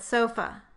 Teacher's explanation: The unstressed version is the second vowel in the word sofa. And we call its symbol schwa. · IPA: ə